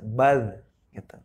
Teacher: Baz ini bukan termasuk huruf qalqalah, jadi tidak boleh mantul atau membal. Nggak boleh zazizubaz.